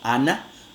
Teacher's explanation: en los contextos intervocálicos como ana, ahí sí que se realiza alveolar normal